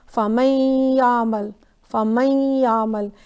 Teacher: تھوڑا سا نیزل نون کا ساؤنڈ رہے گا. فمن یعمل، فمن یعمل، یعنی نیزل نون کے ساتھ پڑھیں گے. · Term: ہاف ادغام